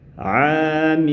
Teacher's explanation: Cara bacanya dimasukkan ke huruf nun. Kemudian jangan lupa sertakan ghunah, sertakan dengungan lamanya kurang lebih dua harakat.